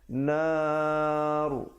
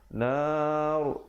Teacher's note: Afdal diteruskan kerana di situ waqaf sili, tapi kalau tidak sampai boleh berhenti di situ, tapi berhenti dalam keadaan ra yang tebal